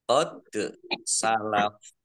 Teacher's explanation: Dal sukun bacaan qalqalah dibaca memantul ditambahkan pantulannya qad salaf dan dibaca pendek karena tidak ada tanda panjangnya.